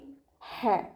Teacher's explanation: ഹ മഖ്റജ് വരുന്നത് വസത്തുൽ ഹൽക്കാണ്, തൊണ്ടയുടെ മധ്യഭാഗം.